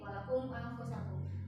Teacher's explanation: Begitupun ketika teman-teman semua bertemu dengan mim mati di Al-Quran nanti ya, mim mati selain ketemu dengan ba dan mim itu jangan terlalu ditekan gitu. Selewat aja